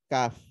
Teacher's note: Dia pangkal lidah ketemu langit-langit lunak plus langit-langit kerasnya sekaligus